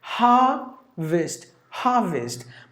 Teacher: Only 2 syllables. You have to get the stress for the first syllable.